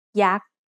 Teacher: Yak is high tone because it has a low-class consonant and a dead syllable with a short vowel.